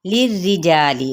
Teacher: लाम की ज़ेर को रा के साथ रा बारीक पढ़ा जाएगा